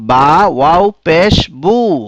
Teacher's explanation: যজম বিশিষ্ট ওয়াও, অর্থাৎ ওয়াও যখন সাকিন হয় এর পূর্বের বর্ণে যখন পেশ হয়, যেমন বা, ওয়াও পেশ বু, ওয়াও সাকিন এবং তার পূর্বের হরফ দেখতে পাচ্ছ এখানে পেশ আছে, এখানে মদের হরফ হয়েছে, এই ওয়াও জৌফ বা মুখের ভিতর খালি জায়গা থেকে উচ্চারিত হয়